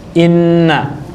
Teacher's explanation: huruf nun butuh rongga hidung untuk dia bisa bunyi. M ma m dia perlu rongga hidung buat ngebunyiin huruf ini. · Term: Nun tasdid